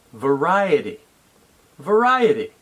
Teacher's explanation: the word stress is on the second syllable